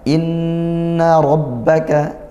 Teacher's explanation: Inna ada Nun bertasydid kita baca dengung ghunah · rnya berharakat fathah maka kita baca tafkhim ditebalkan